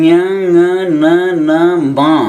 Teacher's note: ఇక ఞ ङ న న మ అనే ఈ 5 అక్షరములు వాటి వర్గస్థానములో పుడుతూ నాసికారంధ్రం గుండా బయటికి వస్తాయి కనుక వీటికి అనునాసికములని పేరు